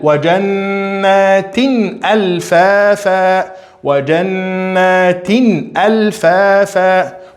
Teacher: Pronunciou o nun, pronunciou o tanwin completamente, porque depois do tanwin apareceu hamza. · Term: idhar